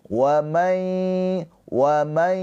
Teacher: Maka cara bacanya nunnya ini dileburkan, dimasukkan ke huruf ya, ditahan dua harakat sambil dengung ya. Keluar suaranya dari hidung. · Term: idgham bi ghunah